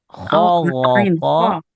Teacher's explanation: Kho, tenggorokan atas. Gho, tenggorokan atas. Qo, pangkal lidah atas. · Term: berdekatan makhrajnya